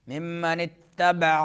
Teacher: عین درمیان حلق سے